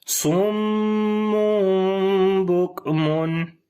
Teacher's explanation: دو پیش من، آخر میں نون کی آواز آ رہی ہے، اس نون کو نہیں پڑھیں گے بلکہ اس کی جگہ میم کی اب آواز آ جائے گی · اقلاب ہوا، نون کو میم میں بدل دیا، تو یہاں پر میم کی آواز کو سافٹ کر کے پڑھیں گے، سخت نہیں پڑھیں گے، اور لمبا کریں گے